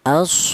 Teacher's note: Kemudian di sini ada aso, yaitu ada huruf shad di mana huruf shad ini berharakat berdiri. Ini dibaca panjang dua alif apa satu alif atau dua harakat atau dua ketukan. As seperti itu atau dibaca mad thobi'i ya. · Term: matobi'i